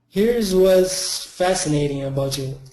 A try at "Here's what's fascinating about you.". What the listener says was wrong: You generally have no problem with the S, but make sure you keep it. This time you dropped it.